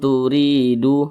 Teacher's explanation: karena dia izhar maka dibaca jelas, tidak berdengung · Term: izhar syafawi